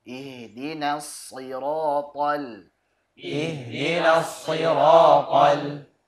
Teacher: Jadi lam tipis, jangan terpengaruh dengan tebalnya huruf ta.